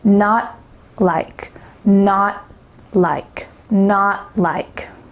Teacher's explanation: Your tongue is stopped at the top of your mouth when you've tried to say that final T, but you don't let that puff of air come out. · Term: stop T